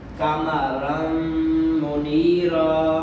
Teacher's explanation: تو یہ تنوین کا جو نون ہے یہ میم میں داخل ہو جائے گا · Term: ادغام